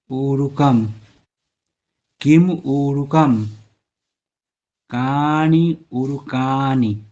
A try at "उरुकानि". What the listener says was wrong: वो दीर्घ है, रू ह्रस्व है।